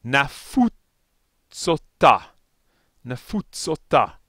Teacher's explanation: a connecting vowel in this case it's a long o